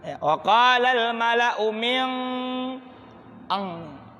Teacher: Kalau bunyi n, dekat lidah, dekat pangkal lidah dan gigi, ya min kan min n. Sedangkan qaf di pangkal lidah, tempat jadinya lidah. Maka angnya itu langsung dekat dengan bunyi huruf qaf. Maka min atau mang, wa qalal mala'u min ang, karena bertemu dengan huruf qaf. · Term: ikhfa ab'ad